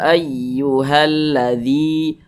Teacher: dzi dibaca panjang ini namanya Mad Thobi'i Mad thi'i itu biasa disebut juga dengan mad asli perhatikan rumus